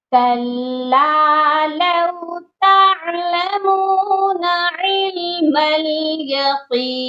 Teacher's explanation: یہاں پر عین کی آواز درمیان والے حلق سے آئے گی